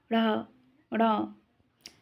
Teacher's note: उच्छिप्त या द्विगुण व्यंजन जिन वर्णों के उच्चारण के समय जिह्वा पहले ऊपर उठकर मूर्धा को स्पर्श करती है और फिर तेजी से नीचे गिरती है तथा वायु तेजी से बाहर निकलती है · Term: उच्छिप्त व्यंजन